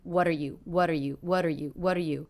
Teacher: very fast quite flat lower in volume